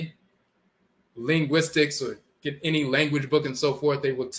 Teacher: the tongue tapping the roof of the mouth once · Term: rolling R